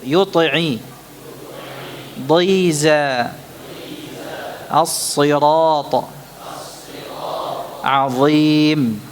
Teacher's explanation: Ketika kita ucapkan masih terasa betul tafkhimnya, walaupun dia berada pada tingkatan yang paling rendah.